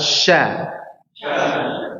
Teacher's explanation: shin itu lafadznya atau tempatnya itu terletak pada tengah lidah yang diangkat sedikit ke atas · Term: huruf shin